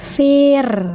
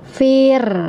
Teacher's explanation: Karena sebelumnya huruf berharokat kasroh ya. Fir, jadi getarannya di ujung saja, tidak memenuhi rongga mulut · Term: suara ro-nya tipis